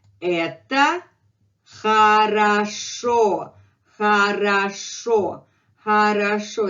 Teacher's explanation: very good example where O gives up its positions as O and becomes A. Look, the word has 3 O.